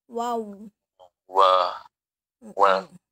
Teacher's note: Selanjutnya adalah huruf waw. Huruf waw makhrajnya di safatain, di bibir.